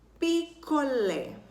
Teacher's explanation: A sílaba mais forte é o lé. Ela é a última. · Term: oxítona